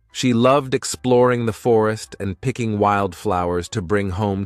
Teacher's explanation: notice how we emphasize the word loved at the beginning of the sentence